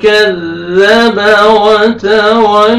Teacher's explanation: کذب وتولى، واو کو لام کے ساتھ ملا کے لام کو مر فتحہ الف صغیرہ، الف مدہ کا قائم مقام ہے، آپ نے ایک الف کے برابر آپ نے کھینچنا ہے